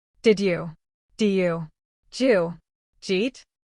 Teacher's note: It sounds crazy. Je yet the did and the you mix together to make a j sound